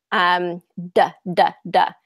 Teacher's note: So if you put your hand on your throat and you do duh, duh, duh, that's a voice sound. Your throat is vibrating. You can feel it. Okay. There's a vibration there. So the D, tongue behind your teeth, duh, duh, duh, kind of burst out of there.